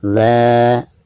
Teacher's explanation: bacaan la di sini dipanjangkan 2 harokat karena dihukumi mad tabi'i, ada fathah lalu berhadapan dengan alif.